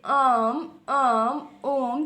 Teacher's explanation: प्लुप्त स्वर जिसमें ह्रस्व और दीर्घ से भी 2 गुना यानी कि 3 गुना समय लगता है उन्हें प्लुप्त स्वर कहते हैं।